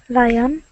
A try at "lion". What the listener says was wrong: Don't say lie on, because that sounds like lie on the bed. It sounds like lion. Lion.